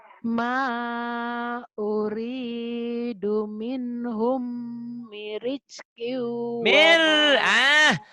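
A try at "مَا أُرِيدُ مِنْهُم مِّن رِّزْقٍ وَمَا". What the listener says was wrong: Kau ini hutangnya di sini. Hutang shin sama hutang tasdid. Tasdid kau tak keluar nih. Mirizki. Ini banyak tasdidnya tuh. Ada berapa ya? Ada berapa nih? 3. kurang. Harus semuanya.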